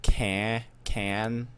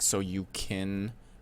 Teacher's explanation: her mouth is just gonna flow straight from that k to n